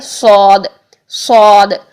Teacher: تو صاد کے لیے بھی ہم یہی کام کریں گے کہ زبان کی جڑ اوپر تالو کی طرف اٹھائیں گے اور منہ بھر کے ہم اس کو ادا کریں گے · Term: موٹا حرف